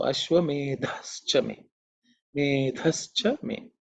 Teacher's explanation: the dha is the fourth letter in the tha varga. So it has to be aspirated, it has to be stated with certain emphasis, because it's the fourth letter in the tha varga.